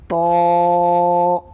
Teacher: زبان کی نوک کو سامنے کے دو دانتوں کے جڑ میں لگانے سے طا ادا ہوتا ہے